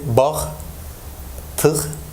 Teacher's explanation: Soft G is articulated as H in word final position when preceded by a plus back vowel, and when it's followed by a vowel, it receives voicing and pronounced as a voiced velar fricative. · Initially, it seemed to be like a voicing, but actually, I realized that this is a final devoicing. So, soft G is a voiced velar fricative R, but it gets devoiced when it is in a word final position